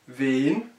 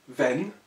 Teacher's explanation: donc E long, wen, par opposition au mot que nous avons ici, E court, wenn, parce qu'il est suivi de deux N. Donc on a pratiquement la même orthographe, si on peut dire, sauf que ici on a doublé le N.